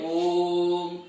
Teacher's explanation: ओम बोलने में देखिए ओम 3 गुना समय लग गया। अ बोला, आ 2 गुना समय लगा, ओम 3 गुना, इसे प्लुत स्वर कह दिया जाता है।